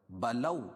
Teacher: واو ساکن سے پہلے زبر ہو تو واو لین ہوتا ہے، اس کو نرم آواز کے ساتھ جلدی پڑھتے ہیں